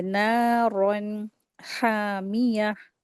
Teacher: यहाँ पे तनवीन के बाद हा आया है, तो यहाँ पे इज़हार का रूल अप्लाई करेंगे, नून को 2 हरकत खींच के पढ़ेंगे।